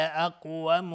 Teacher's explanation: قاف قلقله میخواد چون ساکنه